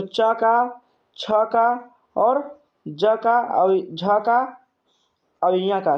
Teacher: किससे उच्चारण होता है? तो तालु से होता है।